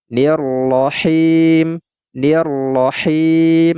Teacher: huruf mim ini karena wakaf tidak lagi dibaca Mi tetapi kita matikan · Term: Mad Arid lisukun